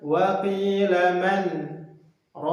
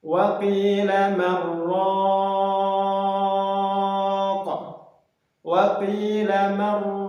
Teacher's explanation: pada surah Al-Qiyamah itu dibaca idgham, tidak dibaca saktah.